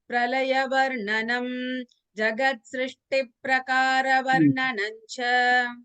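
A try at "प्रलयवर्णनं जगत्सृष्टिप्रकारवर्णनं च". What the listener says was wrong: Here you had missed the Ditvam. Jagat Srishti Prakara.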